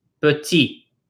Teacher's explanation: We do not pronounce that final T.